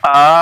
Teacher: کھڑا حمزہ کے اوپر کھڑا زبر ہے اس لیے ایک الف کے برابر کھینچ کر پڑھیں گے